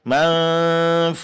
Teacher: Di sini fush panjangkan 4 harakat.